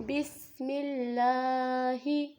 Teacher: یہاں پر سین میں سٹی کی آواز نکالنی ہے